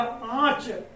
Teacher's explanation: तो यहाँ पर आप देखेंगे यहाँ अनुनासिक का प्रयोग किया जाएगा तभी हो जाएगा आंच, ठीक है। नाक और मुख दोनों से वायु प्रवाहित होगी